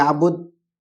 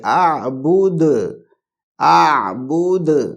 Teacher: دال کے اوپر قلقلہ کرنا ہے، مطلب دال کی آواز باؤنس ہوگی، ٹکرا کے آئے گی واپس. بود، کیونکہ حروف حلقی حروف قلقلہ ہیں، قاف طا با جیم دال، تو اس میں ایک دال بھی ہے.